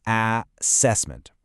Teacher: The open ah sound where you drop your jaw